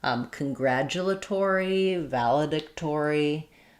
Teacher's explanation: in a longer word like congratulatory, we get some secondary stress on the or syllable, so it keeps its full or sound